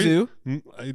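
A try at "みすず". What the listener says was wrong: Misuzu. That's not two Z's, right?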